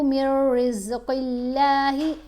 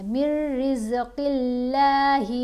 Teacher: میم کو آپ نے را سے ملانا ہے اور غنہ نہیں کرنا